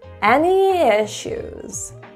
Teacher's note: notice the downward intonation indicating confidence and Authority